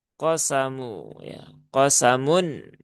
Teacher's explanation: huruf qof ini huruf tebal ya huruf isti'la dia di pangkal lidah